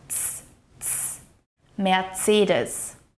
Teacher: the C sound here in Mercedes is more like a harsh TS sound.